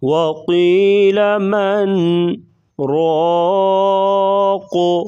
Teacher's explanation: سکتہ مطلب آواز کو بند کرنا، یعنی سانس نہیں توڑیں گے، تھوڑی دیر کے لیے آواز بند کریں گے